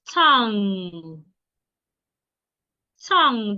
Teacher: The G should not be heard.